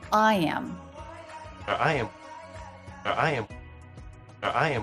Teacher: here he is stressing I so he doesn't make that a contraction